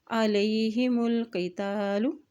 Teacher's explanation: मीम की पेश को लाम के साथ मिलाते हुए पढ़ेंगे क्योंकि लाम के पे जज़म है।